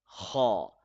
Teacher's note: Kha is a hard letter. It is read from the top throat. We use force in the letter Kha. Secondly, kha is a heavy letter.